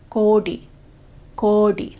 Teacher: long O, retroflex D